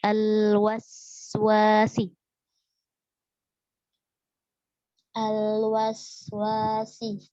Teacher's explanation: Jadi jelaskan sofir yang seperti suara ular itu. Kemudian alirkan nafasnya, alirkan suaranya.